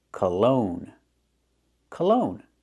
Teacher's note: the first syllable is not stressed, so it's a relaxed closed sound.